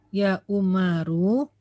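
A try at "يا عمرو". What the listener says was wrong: Nah, ini ada wawunya berarti bukan Umaru. Ya Amru.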